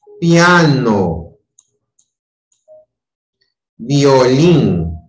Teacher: Es cuando primero en la unión está ubicada una vocal cerrada y luego una vocal abierta. Entonces, la pronunciación va de menor a mayor. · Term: diptongo creciente